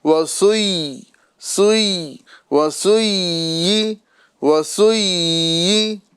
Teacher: یا کو ہمیں نیچے گرا کر ادا کرنا ہے، ٹھیک ہے نا. سوئی سوئی، یہاں پر یا مشدد بھی ہے، لہذا یا کے مخرج میں جو ہے آواز تھوڑی دیر کے لیے جاری رہے گی